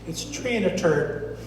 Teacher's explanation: pronounce it with a t sound instead of a th sound